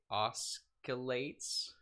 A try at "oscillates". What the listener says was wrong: you don't pronounce the C it's oscillates